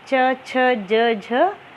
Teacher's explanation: स्पर्श संघर्षी व्यंजन ऐसे व्यंजन होते हैं जिन व्यंजनों में हमारे मुख के अवयव एक दूसरे से स्पर्श होते हुए रगड़ खाकर बाहर निकलते हैं।